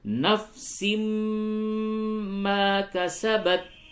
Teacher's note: یہ نون کی آواز کو میم سے بدل دیں گے اور غنہ کریں گے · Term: ادغام مع الغنہ